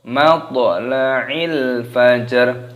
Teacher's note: Toknya dikolkolah, dipantulkan, suaranya dibaca matla'il fajr. Alif lam qamariyah, lamnya sukun.